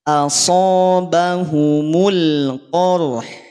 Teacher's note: Rahangnya dulu rahang tipis pada huruf H. Sedangkan pada huruf qaf, pada huruf ro dia rahangnya tebal.